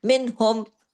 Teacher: نون ساکن کے بعد ہا ہے، ہا حرف ہلکی ہے، اظہار ہلکی یہاں پہ ہوگا، کوئی غنہ نہیں ہوگا یہاں پہ